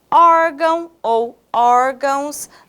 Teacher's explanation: ela não é oxítona não não vejam bem órgão ou órgãos nós temos aqui o or como sílaba tônica